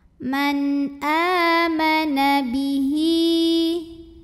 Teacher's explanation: Man a mad badal karena ada hamzah yang dipanjangkan atau ini ada alif dengan harokatnya fathah yang panjang. Maka hamzahnya ini panjang, dua harokat.